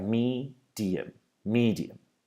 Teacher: we have the stress on the first vowel